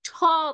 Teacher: যখন আমি ঠ বলছি, an extra puff of air comes out, right? সেটা হচ্ছে অ্যাসপিরেটেড সাউন্ড।